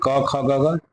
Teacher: कवर्ग माने क ख ग का उच्चारण देखिए कहाँ से होता है, कंठ से होता है।